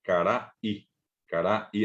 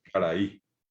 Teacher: esa que está suspendida, que en guaraní le llamamos consonante glotal